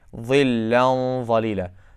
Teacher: The top part of the tip of the tongue is underneath the edges of the top teeth.